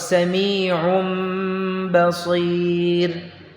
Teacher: Jadi kemudahan di dalam mengucapkan nun sukun dan tanwin ya dengan diubah, dengan dirubah, dibalik menjadi mim. Nunnya dibalik menjadi mim pengucapannya. Dan disamarkan ketika bertemu dengan huruf ba. Ya, karena kalau kita baca anbihum berat. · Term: iqlab